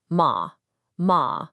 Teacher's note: It's a sharp falling sound. It starts high and drops fast like you're giving a command. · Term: fourth tone